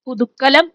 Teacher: പുതുകലം, ഇത് കർമ്മധാരയ സമാസം സംഭവിക്കുമ്പോൾ പുതുക്കലം ആയി മാറുന്നുണ്ട്. അവിടെയോ ക എന്ന ദൃഢവ്യഞ്ജനം ഇരട്ടിക്കുന്നു, പുതുക്കലം ആയി മാറുന്നു